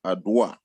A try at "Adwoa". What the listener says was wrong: butchered my name. My name is Ajua. It's A-J-U-A. So even though it's spelled A-D-W-O-A, you pronounce it with a J. So it's Ajua.